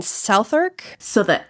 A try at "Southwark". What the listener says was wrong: Southwark. No, Southwark. No, there's no irk. Southwark.